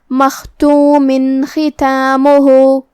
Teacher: ابہار کا معنی ہے ظاہر کرنا، تو ہم یہاں تنوین کو ظاہر کریں گے اور اسے نون ساکن پڑھیں گے اور بغیر غنہ سے حکم کو ادا کریں گے